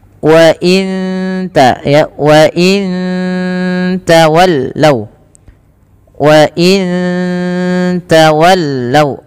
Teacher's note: bacaan ikhfa hakiki, samarkan nunnya ke ta